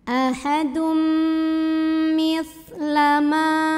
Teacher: Maka tanwin dhammahnya leburkan ke huruf mim disertai dengung. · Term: idgham bil gunnah